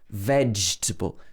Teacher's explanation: We stress the veg, veg, v-edge, and the middle of the word is contracted